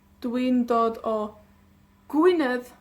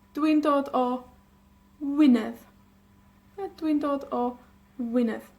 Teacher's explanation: la G es la única consonante, una de las letras que mutan, que desaparece, que no cambia pero desaparece. Entonces, en vez de Dwi'n dod o Gwynedd, tenemos Dwi'n dod o Wynedd.